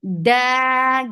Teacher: give very sharp sound of dal, no flow of breath or sound, and make it 2 counts long.